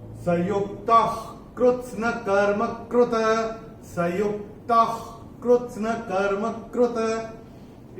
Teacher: विसर्ग के बाद अगर क या ख आता है तो विसर्ग का उच्चारण आधा ख होता है। ख जैसे एपिग्लॉटिस से हम बोलते हैं ना, ख।